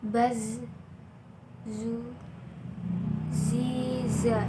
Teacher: Dikeluarkan dengan ujung lisan hampir di atas dua gigi seri bagian bawah. Diucapkan dengan mengalir suara tanpa diiringi dengan udara. Sifat lain pada huruf Za, ini karakter khasnya mirip dengan dengungan tawon.